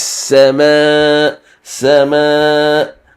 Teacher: it is a long mud. We read it 4 harakat.